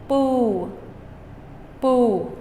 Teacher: I'm simply using my lips to stop the sound, and I release them as I say the ooh sound.